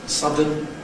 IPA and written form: ˈsʌdən (sudden)